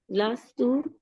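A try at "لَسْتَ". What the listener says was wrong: हाँ, लस्ता नहीं आप करेंगे, लस्ता करेंगे तो वो तो अलिफ लगा के खींच दीजिए। हाँ, हाँ जी, वो कुछ और बन जाएगा ना, तो ऐसे नहीं हम कर सकते, क्योंकि इसमें मतलब में फर्क आ सकता है ना। हाँ, ये इनको खींचना नहीं है, आखिरी हर्फ को खींचते नहीं होते।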